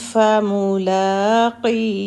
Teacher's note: لام کی حرکت 2 کیونکہ کھڑا زبر ہے